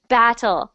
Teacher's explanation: When we have two T's, sometimes it does sound a bit like a D. Battle. But you can say battle.